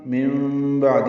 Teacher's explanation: نون ساکن کے بعد با آنے کی وجہ سے نون کی جگہ میم پڑھیں گے، یہی اقلاب یا ابدال ہے تو نون کو میم سے بدل دیا گیا.